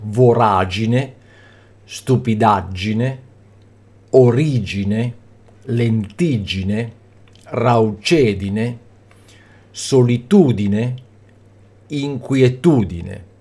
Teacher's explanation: in agine agine igine igine edine Udine sono sempre sdrucciole quindi l'accento cade sulla Terza sillaba partendo ovviamente dal fondo